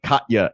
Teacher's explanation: I said Katya and put the glottal stop in the middle there